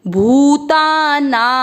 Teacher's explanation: भ पर बड़े ऊ की मात्रा लंबा खींचेंगे